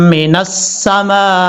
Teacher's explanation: اس مد کو مد متصل کہا جاتا ہے، اڑائی الف کے برابر آپ نے لمبا کرنا ہے